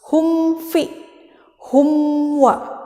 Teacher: Jadi makharijul hurufnya itu dekat. Nah, karena dia hukumnya izhar syafawi, maka dia tidak boleh dibuat jadi samar. Karena kalau samar itu hukumnya bukan izhar, tapi ikhfa syafawi.